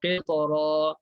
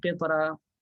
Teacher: Jadi bacanya tebal, qitara. Jangan tipis, qitara. Tak boleh tipis.